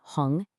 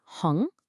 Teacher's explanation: You should literally feel a puff of air if you put your hand in front of your mouth. For hong, that second tone has to go up.